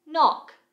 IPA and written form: nɒk (Knock)